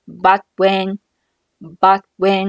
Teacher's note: 前一个词▁but▁尾音的▁t▁是一个爆破音，失去爆破不发声